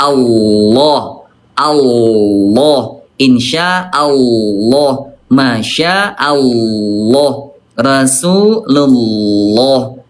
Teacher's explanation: Tapi kalau lafaz Allah maka dia tebal yaitu dengan cara mengangkat pangkal lidahnya. Ah diangkat Allah.